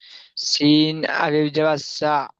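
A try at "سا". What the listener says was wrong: একালি পরিমাণ টান হচ্ছে না।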